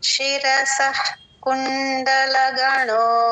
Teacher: క ముందు విసర్గ అండి హెచ్ లాగా చెప్పాలి హాఫ్ విసర్గ చెప్పాలి